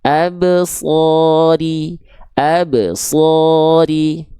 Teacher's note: Ingat shadnya tebalkan tanpa monyong